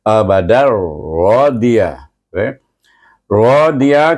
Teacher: tanwin bertemu dengan huruf ra dibaca dengan Idam bila gunah kerana huruf ra ini adalah huruf Idam tetapi tidak boleh didengungkan